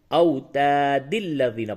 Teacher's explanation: وصل کی حالت میں یعنی ملانے کی حالت میں دال پہ قلقلہ نہیں ہوگا اور دال کو لام سے ملائیں گے